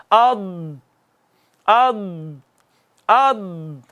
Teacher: اس حرف میں صفت استطالت پائی جاتی ہے، اس کو طول دیتے ہیں پڑھنے میں۔